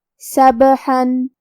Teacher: حرف الحا کو ہم حلق کے درمیان والے حصے سے پڑھیں گے اور اس پہ تنوین زبر ہے.